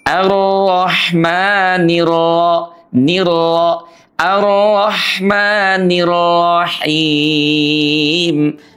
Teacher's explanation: Kemudian yang kedua dia sukun sebelumnya fathah atau atau domah. Nah, pada kasus arrahmanirrahim itu dia huruf r-nya berbaris fathah maka dia dibaca tebal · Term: tafkhim